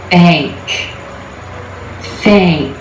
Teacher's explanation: If you're looking at a transcription in a dictionary, you'll see the A as in black symbol before the ng. But what you're going to hear is more of an A as in gray sound.